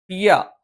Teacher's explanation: ആദ്യം പറയാം യ നാവിന്റെ മധ്യഭാഗം അത് മേലെ അണ്ണാക്കിൽ എന്ന് പറയും അഥവാ നാവിന്റെ മധ്യഭാഗം അതിന്റെ നേരെ മുകളിലുള്ള ഭാഗത്ത് സ്പർശിച്ചുകൊണ്ടാണ് നമ്മൾ യ ഉച്ചരിക്കുന്നത്